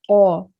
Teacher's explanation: इसे पढ़ना है कौ, मुंह भर के पढ़ना है, मोटा पढ़ना है कौ। अब ये देखते हैं, ये नर्म हर्फ है, बारीक है, जहां से कौफ अदा होता है वहीं से काफ अदा होता है, लेकिन इसमें फर्क ये है कि वो मोटा है और ये बारीक है।